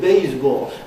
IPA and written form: ˋbeɪzbɔːl (baseball)